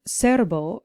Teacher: our first word serbo has the stress on the first syllable